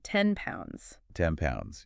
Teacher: Yep, there it is again. The N becomes an M because of the P in pounds. Because P is also a lip sound.